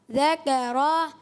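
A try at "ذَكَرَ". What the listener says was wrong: اچھا ذکر، تھوڑی سی را میں زبر تھوڑی سی کھینچتی ہوئی، تھوڑی سی کھینچی، نہیں کھینچنی چاہیے، کیا پڑھیں گے؟ ذکر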